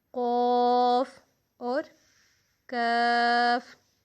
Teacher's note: کاف صفت استفعال کا مطلب ہے باریک پڑھنا، لیکن قوف جو ہے وہ حروف مستعلیہ میں سے بھی ہے، یعنی مستعلیہ اس کی صفت ہے، تو اس کا مطلب ہے کہ موٹا پڑھنا۔